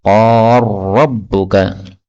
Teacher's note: lam ketemu ra boleh idgham menjadi qar rabbuka